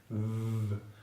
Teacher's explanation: It's very similar to the /f/ consonant sound, but this time it's a little bit longer, and with lots of vibration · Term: /v/ consonant sound